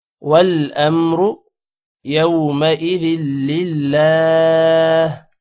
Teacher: را کو موٹا کرنا ہے اور لمبا نہیں کرنا